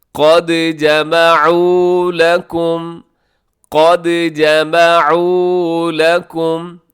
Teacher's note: دال کے اوپر جزم ہے، دال حروف قلقلہ میں ہے تو یہاں آپ قلقلہ کیجیے گا۔